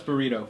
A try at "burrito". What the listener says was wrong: You didn't roll your R's, though. You didn't roll your R's.